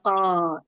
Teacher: Saat melafazkan huruf kaf, posisi pangkal lidah terlalu dalam. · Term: Kaf terlalu dalam